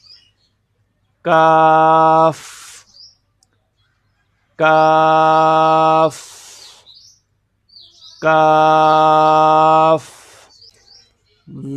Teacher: قاف کی جگہ سے ذرا نیچے منہ کی جانب ہٹ کر اس سے ادا ہوتا ہے. اس کو بالکل نرم آواز میں بھی پڑھا جاتا ہے.